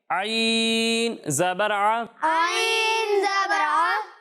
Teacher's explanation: جب آپ ہا اور عین کی ادائیگی کریں گے تو ان دونوں کو حلق کے درمیان والے حصے سے ادا کریں گے